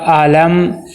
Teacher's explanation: میم کی آواز رک جائے اور ناک میں نہ جائے، میم کی آواز کو ظاہر کر کے پڑھنا ہے۔ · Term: اظہار شفی